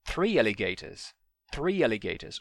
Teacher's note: O 3 acaba com vogal, o alligators começa com vogal, mas você não junta o 3 em 3 alligators